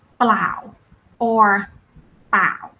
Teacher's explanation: the initial cluster is not important anymore. We don't pronounce a clear L or R